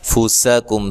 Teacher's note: سین کو باریک سیٹی سے ادا کرنا ہے ، کاف کو باریک پڑھنا ہے، میم ساکن کا یہاں اظہار